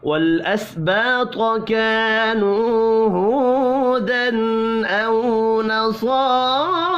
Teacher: الف مدہ اور واو مدہ تینوں ایک ایک الف کے برابر کھینچ کر پڑھے جائیں گے